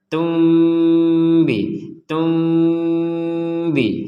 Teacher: nun sukun ini bertemu dengan ba maka yang barusan kita baca Tun akan menjadi Tum nah menjadi Tum ya kalau ditulis dalam bahasa Indonesia t m